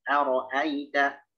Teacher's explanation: Aro'aita yang tebal hanya huruf ro. Jangan menebalkan hamzah. Jangan menebalkan ya, jangan menebalkan ta.